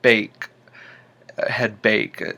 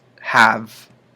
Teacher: you're getting that bottom lip up underneath your top teeth to get the V sound